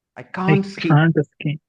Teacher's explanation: in the negative sentence the stress is on can't and the verb